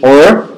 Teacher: an American English or is produced with a tongue blade that is raised toward the alveolar ridge. Many speakers also curl.